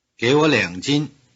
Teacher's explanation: the verb to give, 给, changes from a low tone to a rising tone before the pronoun 我, even though 我 loses its tone here.